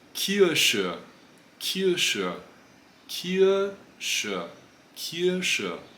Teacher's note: Vocalisches R tem um som semelhante ao E do alemão ou ao A português.